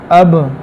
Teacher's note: با کے اندر جہر اور شدت ہے، قلقلہ بھی ہے · با کے اندر قلقلہ اور مضبوطی جماؤ کے ساتھ